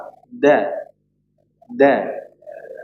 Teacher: pertemuan antara huruf dal, to dan ta, ujung lidah bertemu dengan gusi atas, gusi gigi atas.